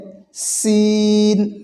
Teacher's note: সিন বলার সময় চিকন করে বাতাস বের হবে আওয়াজ হবে চিকন